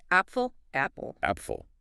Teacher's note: Short clear a sound like ah